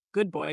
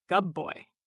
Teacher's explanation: assimilation changing sounds good boy becomes gub boy